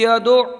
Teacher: دال کو جماؤں کے ساتھ ادا کریں گے اس لیے کہ دال حروف قلقلہ میں سے ہے، اور قاعدہ یہ ہے کہ جب حروف قلقلہ مشدد ہوں تو انہیں خوب جماؤں کے ساتھ پڑھا جاتا ہے۔